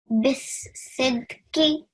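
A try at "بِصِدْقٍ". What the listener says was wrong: Now try and not break it into that many parts. Bisidqi.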